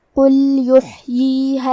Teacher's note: یہاں لام ساکن ہے تو ہمیں لام کو ظاہر کرنا ہے